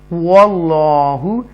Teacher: تفخیم کے ساتھ پڑھیں گے واو گول ہونٹ گول ہوں گے واو کی ادائیگی کرتے ہوئے